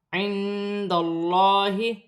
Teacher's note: اللہ کی لام سے پہلے زبر آ رہی ہے، اللہ کی لام موٹی پڑھی جائے گی۔ عند اللہ، الف مدہ بن رہی ہے، ایک الف کی مقدار کھینچ کر پڑھا جائے گا۔